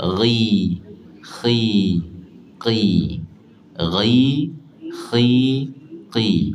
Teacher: Tafkhim nisbi ni dia lemah dengan baris bawah. Dia akan lemah dengan baris bawah. Jadi baris atas dengan baris depan tu tebah bunyi dia.